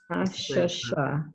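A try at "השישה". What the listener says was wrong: Shish, not sha, it's shisha.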